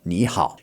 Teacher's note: Now, this is two third tones in a row, but if you were to say ni hao, and then you try to say that fast, ni hao, it gets a bit awkward, okay? So, they change the first tone to a second tone